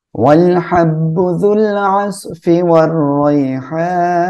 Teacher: এখানে আমরা র মোটা করে পড়বো